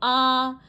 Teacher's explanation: विवृत में आ खुला हुआ है। बिल्कुल हमारा मुंह खुल गया है। · सिंपल खुला हुआ, जब आपका मुंह कब खुलता है, जब आप पूरा एक आ बोलते हो, बोलो आ बोला, आपका मुंह क्या हुआ, खुल गया, मतलब ये विवृत स्वर है